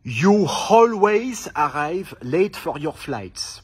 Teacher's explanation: quand le mot précédent se termine par O ou par O U comme dans You à ce moment-là la consonne invisible qu'on rajoute c'est le W · j'insiste sur le W invisible que je viens de rajouter